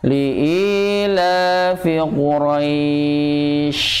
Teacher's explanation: Quraisy. Nah, itu sifat tafasinya pada huruf shin harus ditonjolkan juga · Quraisy ujungnya shin bukan sin.